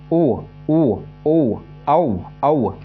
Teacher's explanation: अब देखो गले से और होठों से, ओ ओ ओ औ औ, देखो होठ टच हो रहे हैं लेकिन पूरे बंद नहीं हो रहे, लेकिन टच तो हो रहे हैं ना, औ औ, ठीक है। · अब आती है होठ, है ना, कंठ ओष्ठ, कंठ और होठ दोनों से बोले जाएगा